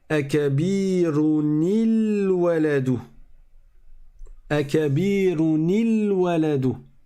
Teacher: j'ai un soukoun à la fin du tanwin et j'ai un soukoun en début de mot. Donc je mets une kasra.